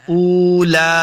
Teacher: حمزہ پیش واو واو مد ہے, اس کو 2 حرکات لمبا کرنا ہے